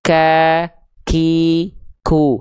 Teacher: Karena huruf kaf punya sifat hams, yaitu mengalir nafas. Yang keluar karakternya percikan. · Pangkal lidah, lihat titik yang berwarna putih. Nah, huruf kaf itu nempel di langit-langit yang lunak dan yang keras. Sehingga ketika dilafalkan, dia akan mengeluarkan percikan nafas.